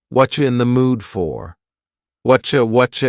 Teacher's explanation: the word you has been reduced to Cha